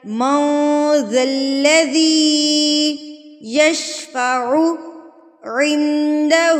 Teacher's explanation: ذل تشدید تو مضبوطی کے ساتھ پڑھا جائے گا